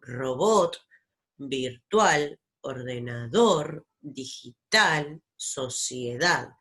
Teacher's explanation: otra consonante por ejemplo palabras como robot virtual ordenador digital sociedad fíjense que la sílaba que suena fuerte es la última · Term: agudas